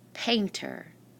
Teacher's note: the first syllable is the accented syllable